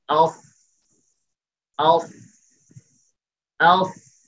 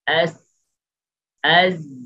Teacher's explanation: তো সাদ সিন যা এই দুইয়ের মধ্যে একটু পার্থক্য, সাদ যেহেতু স্টেলার হরফ, মোটা হরফ, এই জন্য জিহ্বার আগাটা জিহ্বার গোড়াটা একটু ঊর্ধ্বগামী থাকবে সিন এবং যা এর তুলনায়। সিন এবং যা নিচের দিকে, আর সাদ, সাদটা হচ্ছে জিহ্বার গোড়াটা উপরের দিকে।